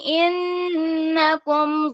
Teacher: نون مشدد پہ آپ نے اچھے سے غنہ کرنا ہے